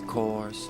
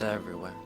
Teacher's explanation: at the beginning, coarse is rhotic, but everywhere is not